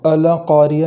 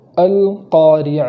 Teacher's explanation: القاریہ، اس پہلی آیت کے اندر پہلے ہی حرف کے بعد جو دوسرا حرف ہے لام ساکن، جس لام پر جزم ہے، تو اس کو اس طریقے سے پڑھیں گے کہ زبر نہ ہو جائے، جیسے القاریہ نہیں پڑھیں گے بلکہ القاریہ اس طریقے سے پڑھیں گے۔